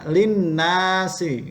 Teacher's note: Gunnahnya adalah nun bertasdid, dibaca double